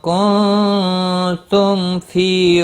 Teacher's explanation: میم ساکن کے بعد فا آیا ہے، اظہار شفوی ہوگا۔ فی یا مدہ ہے، ایک الف کے برابر کھینچ کر پڑھیں گے۔